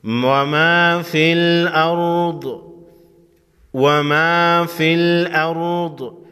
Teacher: ضاد حروف مستعلیہ میں سے ہے، موٹا پڑھیں گے